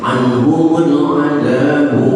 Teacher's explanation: jelaskan suara nunnya anhum tapi jangan ditahan sehingga terdengar bacaan anhumul, jangan, tapi lepaskan saja.